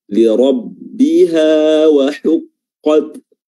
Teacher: ra di sini tebal karena berharakat fathah